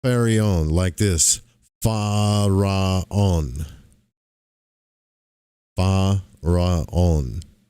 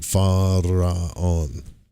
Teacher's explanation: I'm sure he kind of rolls the r too like faron.